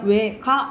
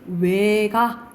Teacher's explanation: 그 예시가 예를 들어서 우리가 왜가를 어떻게 그냥 왜가 이런 식으로 단모음으로 할 수도 있지만 왜가 이런 식으로 이중모음으로도 가능하다라고 보시면 돼요